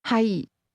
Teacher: Did you pronounce that with a low, level tone?